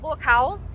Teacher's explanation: when you say the cowl part of BU cow's name you say like it's a question you put a little like valley girl on it so it's